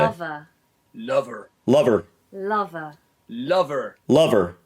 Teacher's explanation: at the end of the word lover I'm doing the schwa ending which you would normally do for an ER ending but tall